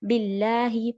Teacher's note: تو اعوذ باللہ، باللہ میں نے ہمیشہ بتایا بی ہے کسرہ ہے تو پراپر کسرہ باللہ نہیں ہونا چاہیے. اور لام، یہ جو لام جلالہ ہے اس سے پہلے کیا ہے؟ کسرہ ہے، تو یہ لام ہم لائٹ پڑھیں گے، باللہ نہیں.